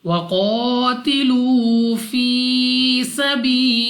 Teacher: Next हमारे पास है लाम ऑफ अल्लाह, और इस लाम ऑफ अल्लाह से पहले हर्फ के नीचे है जेर। तो इस लाम ऑफ अल्लाह को बारीक पढ़ेंगे अपनी आवाज को नीचे गिरा कर